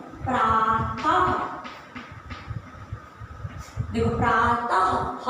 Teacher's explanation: विसर्ग के उच्चारण में ह बोला जाता है।